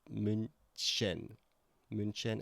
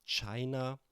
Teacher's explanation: It's a ch sound similar like in China but in China there's a slightly t sound inside the ch and it's just munchen munchen.